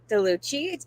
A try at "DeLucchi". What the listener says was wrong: actually DeLucchi. CHI in Italian has a hard C. If there was no H, it would be chi.